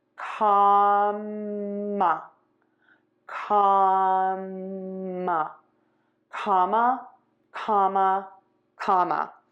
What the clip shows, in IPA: ˈkɑmə